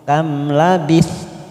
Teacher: Qa fathah diikuti alif. Qala kam, mim sukun idhar safawi kita baca jelas tanpa mendengung